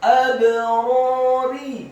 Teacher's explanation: Kata abrari, huruf alif atau hamzahnya dibaca tipis fathah satu harokat, huruf ba-nya dibaca sukun dan wajib untuk diqalqalahkan atau dipantulkan